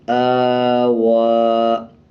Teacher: یا کو نہیں پڑھنا، یا کو سائلنٹ رکھنا ہے اور واو کے اوپر کا کھڑا زبر پڑھا جائے گا۔ وقف کرنے سے پہلے بھی سیم پڑھا جائے گا اور وقف کرنے کے بعد بھی سیم پڑھا جائے گا۔